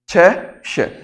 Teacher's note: स्थान क्या है इनका तालू है